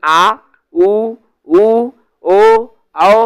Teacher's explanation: पश्च स्वर जीभ के पिछला भाग में जब प्रयोग हो तो उसको पश्च स्वर कहा जाता है